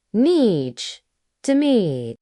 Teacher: When native speakers say nice to meet you, they don't stress every word. They usually stretch the word nice just a little